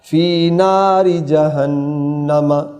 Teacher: نون شد والی مشدد ہے، غنہ ہے.